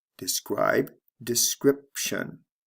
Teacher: the long i becomes a short I